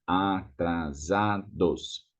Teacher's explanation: There's just one S between two vowels, so Z sound.